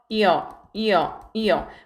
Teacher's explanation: 반모음 이와 단모음 어의 결합으로 이루어진 이중모음입니다. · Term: 이중모음 여